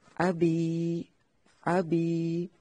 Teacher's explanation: یائے مدہ کو صرف 1 حرکت کے برابر کھینچیں گے